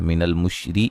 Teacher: را کو باریک پڑھا جائے گا